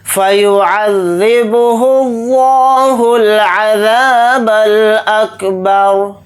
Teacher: را کو ساکن بنا کر پڑھیں گے حالت وقف میں · لفظ اللہ کے لام کو موٹا یعنی پر پڑھیں گے کیونکہ لفظ اللہ کے لام سے پہلے پیش آ رہا ہے، اس لیے لفظ اللہ کے لام کو موٹا یعنی پر پڑھیں گے.